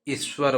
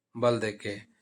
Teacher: ईश्वर, अब ये ईश्वर में ई पहले आ गया तो इस पे बल देंगे ना, इस पे बल देंगे तो ईश्वर बोलेंगे, ईश्वर बल देके ऐसे आएगा।